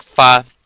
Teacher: we just have an F before it so it sounds like fa and it's a third tone